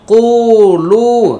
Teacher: কুটা হচ্ছে এক আলিফ টান আর লুটা হচ্ছে তিন আলিফ টান